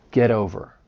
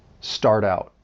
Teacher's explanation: I also want you to keep in mind that when you have a phrase >> and the T comes at the end of the word, but it's between two vowel sounds, you're also going to pronounce that as a flap T